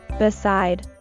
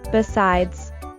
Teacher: The only feature that tells the words apart is the z sound at the end of the word besides.